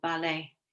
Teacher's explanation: ballet you can't hear the t on that